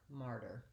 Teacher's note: And then the ending is just the same, martyr. So I still have my long stressed syllable on mar and my short unstressed syllable on the der